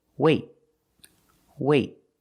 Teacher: but you don't release example wait wait I don't say wait I don't release the T it's a stop T I stop the air · Then we do a stop T. That means you put your tongue up in the T position, but you don't release.